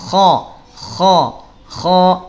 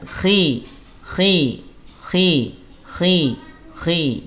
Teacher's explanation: kalau saat fathah dan dah dia tebalnya sempurna ya tebal tapi kalau harakat kasrah ketebalannya berkurang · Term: tafim nisbi